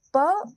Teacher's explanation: जैसे प बोलोगे तो आप प बोलिएगा तो प में दोनों ओठ चिपके होंगे